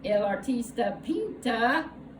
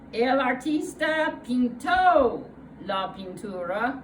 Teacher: Notice that the unstressed A of pinta becomes a stressed O, pinto. The stressed O is a sign of the past tense in Spanish, just as the ED is a sign of the past tense in English.